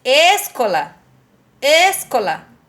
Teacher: O có é a sílaba mais forte desta palavra. Então por isso eu chamo có de sílaba tônica.